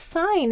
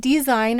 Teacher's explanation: the S says s here and it says its voice sound Z in its derivative design